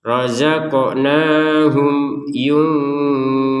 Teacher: Mim sukun bertemu ya ini harus kita baca dengan jelas